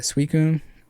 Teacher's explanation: we say Suicune with the unelongated U sound. In Japanese, the U sound should be quick.